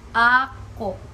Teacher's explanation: when you pronounce this AKO the stress will be on the first syllable